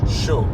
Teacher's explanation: The word chaud is pronounced like the English word show, but you stop right before you start closing your lips for the W